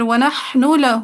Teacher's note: نون کا لام میں سوسی کا ادغام